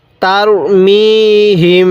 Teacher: এই হিমের মধ্যে আমরা নাকের বাঁশি দ্বারা গুনাহ করবো কারণ মিম সাকিনের পরে বা থাকলে সেখানে আমাদের গুন্নাহ করতে হবে